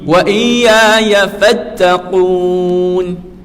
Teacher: Kena tekan. Huruf qaf ni kena tekan, sebab dia huruf yang kena tekan, kena tinggi. Lidah kita tu kena naik atas langit. Taqu ni, halqu ni dia naik.